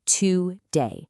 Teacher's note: In today, the heavy emphasis or stress lands on that second syllable